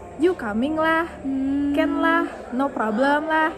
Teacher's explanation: cara bicaranya itu cenderung monoton atau tidak naik turun seperti aksen lain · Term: intonasi